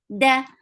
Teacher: dal has shidda sound. There is no flow of hums or breath.